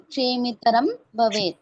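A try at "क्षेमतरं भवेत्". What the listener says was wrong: ಕ್ಷೇಮಿ ಅಲ್ಲ ಮಾತಾಜಿ ಕ್ಷೇಮ ಕ್ಷೇಮತರಂ ಭವೇ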